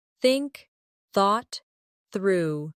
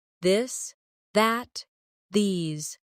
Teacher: Put your tongue between your teeth and push air out for think. For this, your tongue touches the same position but with your voice turned on. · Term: the th sound